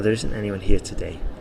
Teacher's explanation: the stress is on today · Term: sentence stress